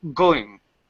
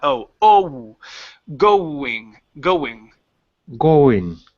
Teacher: open it so it's two sounds on that oh